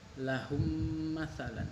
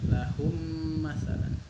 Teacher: Lahum ditahan. Jangan lama-lama, 2 harokat aja. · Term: idgham mimi